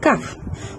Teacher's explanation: huruf Kaf berada di Pangkal lidah menyentuh langit belakang